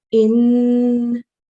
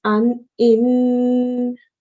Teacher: make the nasal sound for two counts so the nasal sound part of this is the noon sound